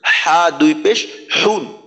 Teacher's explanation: প্রথম হাটা উচ্চারণ করার সময় হা দুই পেশ হুন, গলার মাঝে একটু চাপ দিতে হবে কিন্তু